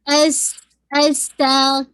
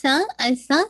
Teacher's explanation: سا کو مخرج پراپر ہونا چاہیے, کوئی وسلنگ ساؤنڈ نہیں ہونی چاہیے